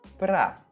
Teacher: Cortamos o som da primeira letra A e dizemos simplesmente pra.